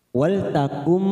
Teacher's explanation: Wal takum ada nun sukun bertemu mim namanya bacaan idgam bighunah